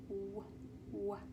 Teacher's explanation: This one, similarly, we're going to use our two lips, but this time this one's called a glide because we're going to glide our lips, make a gliding motion for that sound.